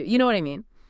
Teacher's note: With my voice rising, I'm genuinely asking, do you understand my point? · If you say, you know what I mean, as a question, with a rising intonation, your voice goes up at the end, like a question mark. Now you are asking.